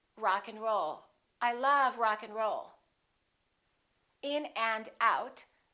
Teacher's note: we reduce the a and the D those disappear often